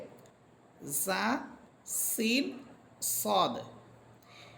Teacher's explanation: এই তিনটা হরফের মাখরাজ হচ্ছে জিহ্বার আগা সামনের নিচের দুই দাঁতের আগার সাথে লাগবে।